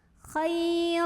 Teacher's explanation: bacanya panjang dua harokat Hai util Kyle ada huruf Line karena ada Ya Sukun sebelumnya Fatah maka dilunakkan atau dilembutkan ajah bacanya